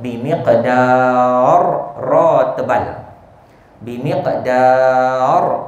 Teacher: Ada qalqalah pada qaf dan kita tutup perkataan tersebut bimiqdar, ra tebal.